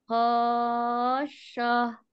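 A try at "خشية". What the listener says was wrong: Panjang. Lebih panjangin.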